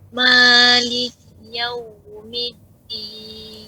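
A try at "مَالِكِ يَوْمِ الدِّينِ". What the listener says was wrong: Ya, tipiskan. Bukan mo tapi ma. Maliki, harus tahu tempatnya. Ulangin.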